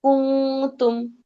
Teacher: নুন সাকিন বা তানভিনকে নাকের ভিতর লুকিয়ে গুন্না করে পড়তে হয়। নুন সাকিন বা তানভিনের বামে 15টি হরফের কোনো হরফ আসলে সেই নুন সাকিন বা তানভিনকে গুন্না করে পড়তে হয়।